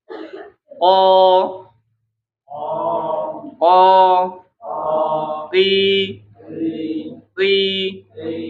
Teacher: qof itu di bagian pangkal lidah ya bagian dalam menyentuh langit-langit